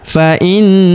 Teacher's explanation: Huruf na kita tahan dan kita tekan serta kita dengungkan dua sampai 3 harakat karena terdapat tanda tasdid di atasnya.